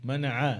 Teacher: মানা এটা আইন, মানা গলার মাঝখান থেকে, মানা আইন